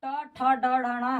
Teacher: तो आपका जो ट ठ ड ढ ण है यह आपका मुर्धा से निकल रहा है